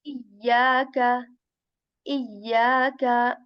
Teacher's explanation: the middle part of your tongue is raised towards your palate